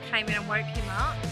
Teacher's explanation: we can see the final sound of 'came' links up to 'in' · there's lots of linking and weak forms so the first 'and' becomes /ən/